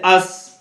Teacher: اوپر نیچے سامنے کے چاروں دانتوں کے کناروں سے ادا ہوتا ہے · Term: سین